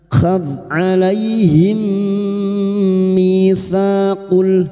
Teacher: alaihim fathah bertemu ya sukun kita lunakkan huruf lin.